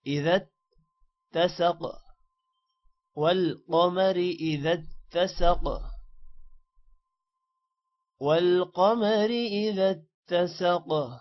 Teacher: اذا ذال کو تا کے ساتھ ملانا ہے شد کی وجہ سے